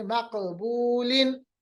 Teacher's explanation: या तो ऐसा कलकला जो बीच में कोई हर्फ हो, यानी मकबूलिन, काफ साकिन है मगर बीच में है, हर्फ के लफ्ज के बीच में है, वैसे कलकला है, बट उसकी स्ट्रेंथ बाकी दो के मुकाबले में कम है